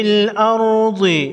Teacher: را پر جزم ہے، اس سے پہلے حرف حمزہ پر زبر ہے، را کو موٹا پڑھیں گے۔ ضاد حروف مستعلیہ میں سے ہے، موٹا پڑھیں گے۔